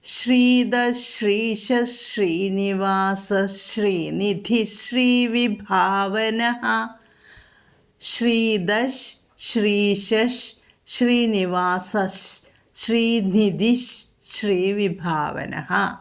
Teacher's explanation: ഇതിലെല്ലാം വിസർഗം കഴിഞ്ഞിട്ട് ശ വന്നിരിക്കുന്നു വിസർഗം കഴിഞ്ഞിട്ട് ഷ വന്നാൽ എന്ത് വേണം വിസർഗ സ്ഥാനത്ത് ഷ എന്ന് പറയണം അല്ലെങ്കിൽ അടുത്ത് വരുന്ന ഷ ഇരട്ടിപ്പിച്ച് ചൊല്ലണം